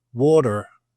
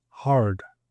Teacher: the US they pronounce all the Rs. And so we say that the UK or the Brits we are nonrotic and the Americans are rotic.